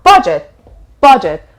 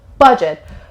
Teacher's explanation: It has 2 syllables and the stress is on the first syllable.